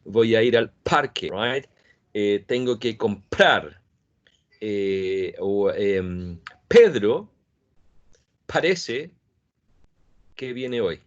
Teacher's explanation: we don't use aspiration for the plosives like p and t in Spanish, but in English there is aspiration in these sounds in initial position.